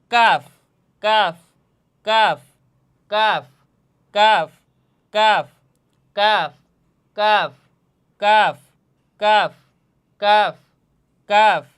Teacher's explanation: কাফের মাখরাজ বলছিলাম জিহ্বার গোড়া থেকে একটু আগাইয়া কাফ, উপরের তালুর সঙ্গে লাগাইয়া জিহ্বার গোড়ার একটু সামনে আগাইয়া তার বরাবর উপরের তালুর সঙ্গে লাগাইয়া কাফ উচ্চারণ হয়।